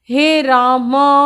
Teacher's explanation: रा को नहीं, माँ को खींचना आपने 3 गुना लंबा। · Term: प्लुत